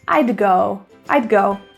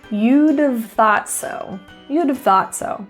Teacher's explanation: I would, you would, she would. So we reduce the word would to just a d sound.